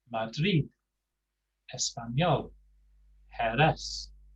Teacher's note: The stress is on the last syllable at the end of the word.